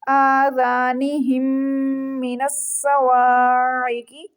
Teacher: میم مشدد ہے، اس کے اوپر غنہ کریں گے